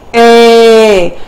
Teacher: a quasi diphthong because you can make this sound without feeling a lot of the movement between the short ah and the e